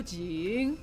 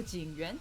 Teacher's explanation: I kind of just go low high and that's just the tonal pattern usually that happens